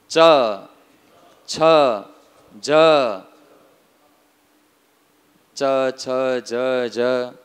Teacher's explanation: જીભ ક્યાં અડે છે? તાળવે અડે છે. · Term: તાલુહુ